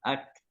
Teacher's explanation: Suara yang tertahan tapi nafasnya masih mengalir. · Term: syiddah tapi hamas